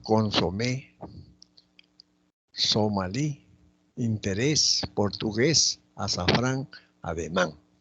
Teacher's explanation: Presentan la mayor fuerza de voz en la última sílaba. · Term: agudas